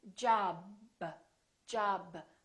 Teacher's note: I cannot continue the sound B. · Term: stop